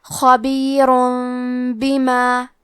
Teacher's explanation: پھر حرف الباء آتا ہے کلمت بما، با حروف القلب میں سے ہے، قلب کا معنی ہے بدل دینا، تو ہم تنوین کو ہلکی می میں بدل کے اور غنہ کے ساتھ یہ حکم کو ادا کریں گے